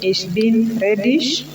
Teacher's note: You will note that the G has got a sh sound when it is at the end of a word.